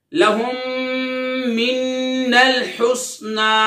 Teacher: ادغام شفوی یعنی غنہ ہوگا